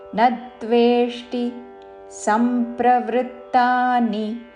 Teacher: నా పక్కన సంయుక్త అక్షరం ఉన్నది కాబట్టి నా మీద ఆఘాత పలుకుతూ